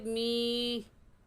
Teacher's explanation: पहली बात, या साकिन से पहले ज़ेर आ जाए तो वो याए मद्दा कहलाता है, और याए मद्दा को एक अलिफ की मिक़दार खींच कर पढ़ते हैं।